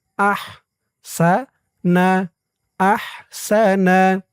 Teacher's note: আলাল্লাযী আহসানা, আহ হার আওয়াজটা গলার ভিতর থেকে চিকুন হয়ে বের হবে।